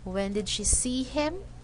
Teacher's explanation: This orange line here is the indication that at the end of the word him, the intonation falls down and it rises up in the important word see. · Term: falling intonation